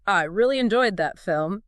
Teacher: they might raise their pitch on a certain word to make it stand out, like, I really enjoyed that film, emphasizing really